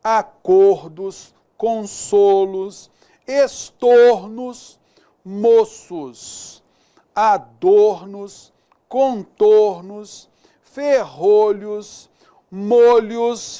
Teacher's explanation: Mantenha o timbre fechado, né? No plural.